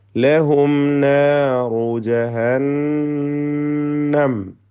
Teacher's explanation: ലഹും സാക്കിന മീമിനെ ഇൽഹാർ ഷഫവി നൽകി മണിക്കാതെ വെളിവാക്കണം. ലഹും നാറു ജഹന്നം.